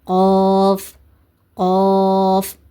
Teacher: கப் கப் இந்த சவுண்டும் வரக்கூடாது. இது ஹெவி லெட்டர்னால உச்சரிக்கும் போது நாவோட லாஸ்ட் பகுதி மேல் முறசோக்கு உயரணும்.